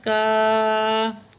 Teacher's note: یہاں جو ہے الف مدہ ہے، 2 کاؤنٹ کھینچیں گے.